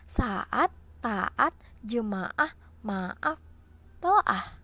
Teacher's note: Jadi deret fonem vokal berbeda dengan gugus fonem vokal ya teman-teman. Dalam deret vokal ini terdapat fonem vokal yang sama dalam silabel yang berbeda. Meskipun letak berdampingan tetapi pelafalannya atau dibacanya tidak melebur.